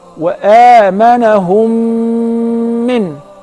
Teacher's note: That is the letter mim. So if the first meme is non-vowel or sakina, followed by a voweled meme, so I will merge the first in the letter and I will pronounce them as one.